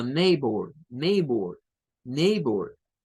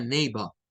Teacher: la pronunciación británica le quita el sonido de la r